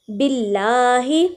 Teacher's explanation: اللہ کے لام سے پہلے زیر ہے تو اللہ کا لام باریک ادا ہو رہا ہے